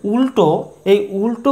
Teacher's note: অর্থাৎ জিহবা উল্টে গিয়ে তালু কিংবা মূর্ধাকে স্পর্শ করতে চাইছে অর্থাৎ এই ল এর উচ্চারণ স্থান তালু কিংবা মূর্ধা আর লঙ্কা · পরের শব্দ উল্টো, এই উল্টো উচ্চারণ করার সময় যে ল উচ্চারিত হচ্ছে, এই ল আমাদের উচ্চারিত হচ্ছে আমাদের উপরে পাটি দাঁতের মাড়ির পিছনে, অর্থাৎ জিহ্বা উল্টে গিয়ে তালু কিংবা মূর্ধাকে স্পর্শ করতে চাইছে। অর্থাৎ এই লয়ের উচ্চারণ স্থান তালু কিংবা মূর্ধা।